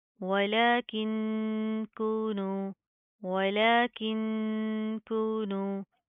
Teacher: लाम के ऊपर खड़ा ज़बर है, इसको एक अलिफ की लिमिट के बराबर खींच कर पढ़ेंगे